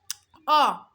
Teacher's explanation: আবার যখন আমি বলবো এ, দেখেন তো এবার চোয়ালটা নিচের দিকে নেমে গেল না, এ নিচের দিকে চাপ, কিন্তু নিচের দিকে চাপ এটা একটু সামনের দিকে চাপ, আর অ আমার টোনটা পিছনে চলে গেছে, ঠিক আছে না, পিছনের দিকে চলে গেছে না, কিন্তু আমার জিভটা কিন্তু কি নিম্ন মধ্য, নিম্ন মধ্য, এবং আমার ঠোঁটটা অর্ধ বিবৃত হয়ে গেছে মানে অর্ধেক খুলে গেছে, অ অর্ধেক খোলা।